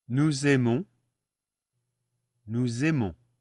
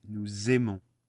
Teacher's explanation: there's a Z in there that appears when we actually pronounce it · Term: une liaison